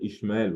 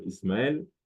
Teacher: Le SH peut se prononcer S.